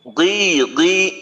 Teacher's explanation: বলি তাহলে হলো সবচাইতে বেশি আর এখন যেহেতু জের দিয়ে পড়তেছি জেরের ক্ষেত্রে মোটার পরিমাণ হলো সবচাইতে কম তবে মোটার মোটা থাকবে পরিমাণটা অনেক কম